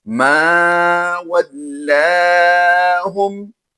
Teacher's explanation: اس کے آگے واو لام زبر ول کی آواز دیں گے، کیونکہ لام مشدد ہے اس لیے مشدد حرف کو پچھلی حرف کے ساتھ ملا کر پڑھا جاتا ہے، تو وہ واو ہے، واو لام زبر ول کی آواز دیں گے۔ لام کھڑی زبر لا کو ہم لمبا کر کے پڑھیں گے، اور ہا میم پیش ہم کی آواز سمپل دیں گے۔